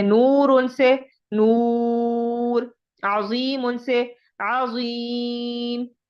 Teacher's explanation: ये तब होगा कि आखिरी हर्फ के आखिर में जेर या दो जेर पेश या दो पेश हों, तो उस रा को हम जो है वो यानी उस हर्फ को हम साकिन करते हैं, और साकिन हर्फ से पहले हरूफ मद्दा हो तो उसको हम 3 से 4 अलिफ के बराबर लंबा करते हैं